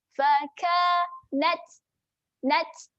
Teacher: Huruf ta ini apabila bertanda sukun, dia ada sifat berangin. Berangin tetapi berangin yang berdesis. Dia keluar angin sedikit sahaja. · Saya tulis kat sini desis, berangin seperti desis. Jadi macam mana nak bunyikan huruf ta berangin tetapi dia berdesis? Maksudnya angin dia keluar sikit. Tips dia kita senyum sahaja.